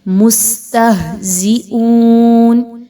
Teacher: زا کو بہت مضبوطی کے ساتھ سیٹی کی آواز کو اس میں لائیں گے